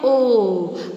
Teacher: अपने मुंह को, अपने होठों को पूरा गोल करके, है ना, पूरा ओ करके गोल करके बोलेंगे आप तो बनता है ओ